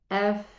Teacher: The fa is one of the letters where the sound runs. And it also has a whispering sound. If you put your palm in front of your mouth, you will feel the air flowing.